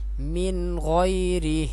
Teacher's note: نون ساکن اس کے بعد حروف حلقی میں سے غین ہے تو یہاں پہ غنہ نہیں کریں گے